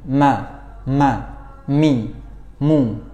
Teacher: huruf mim disertai dengan khayshum atau keluarnya udara yang mengalir dari rongga hidung · Oke, yang pertama itu ketika berharokat maka dibacanya ma. Maka gunnahnya ini lemah atau sangat sedikit sekali ya.